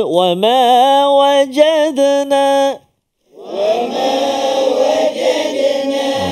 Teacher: Wa ma wajadna. Aywa, qalqalah di tengah kalimah tu, wajadna. Ringan saja dan jangan putuskan suara. Wa ma wajadna, tak nak.